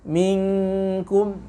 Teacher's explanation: Minkum, ini yang paling jauh disebut dengan ikhfa hakiki ab'ad. Ya, karena huruf nun yang berada di ujung lidah dengan kaf yang berada di pangkal lidah. Ya, ini berjauhan dari segi makhraj.